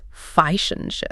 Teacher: >> Often becomes f and chips. The and gets reduced to n